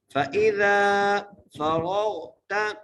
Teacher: فَإِذَا فَرَغْتَ، فَإِذَا، فا زبر فا، حمزہ زیری، زال الف زبر زا، اس زال کو ایک لفظدار کھینچ کے پڑھنا ہے